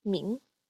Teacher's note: high falling tone finally we have min which means name and it's in the second tone it is a low rising tone